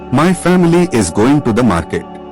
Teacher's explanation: both family and market have stress on the first syllable